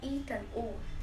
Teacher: vokal tertutup, vokal yang dibentuk dengan lidah diangkat setinggi mungkin mendekati langit-langit dalam batas vokal sehingga lidah seolah menutup mulut, ada I dan U.